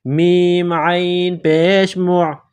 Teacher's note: عین کو گلے کے درمیان سے نکالیں گے